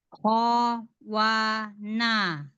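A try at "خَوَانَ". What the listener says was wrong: Nunnya na. Mundur lagi sedikit, Bu. Ujung lidahnya mundur lagi.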